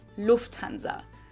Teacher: In English, people usually say Lufthansa, but in German, we say Lufthansa. So the emphasis is on the first syllable, Lufthansa.